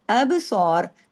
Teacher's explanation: अब सौर के अंदर भी देखिए बाबे कलकला कीजिए और स्वाद को हैवी कीजिए और स्वाद सात मोटे हरूफ की फैमिली से है। अब सौर अगर रुकते हैं तो आपने र को भी हैवी करके ही छोड़ना है। क्यों? अगर र को मिला के पढ़ते हैं अब सोू तो भी र हैवी होगा।